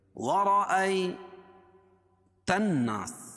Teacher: نون کے اوپر مشدد ہے، اور نون مشدد میم مشدد میں غنہ ہوتا ہے، اس کو غنہ کریں گے، ناک میں آواز کو لے جائیں گے۔ وَرَأَيْتَ النَّاسَ، تن الف لام کے بعد حروف شمسی کے 14 حرفوں میں سے یہاں نون ہے، اس لیے یہاں لام نہیں پڑھی جا رہی، لکھی تو ہے لیکن پڑھی نہیں جائے گی۔